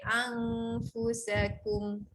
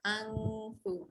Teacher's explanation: Kita nak bunyi fa. Gigi kita, gigi atas menyentuh bibir bawah. Jadi sebelum kita nak sebut keadaan gigi kita macam tu, baru ada bunyi fa kan. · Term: huruf fa